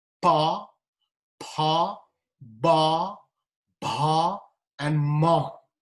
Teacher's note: labial, of course, 2 lips together. Pa, pa, ba, bha, and ma.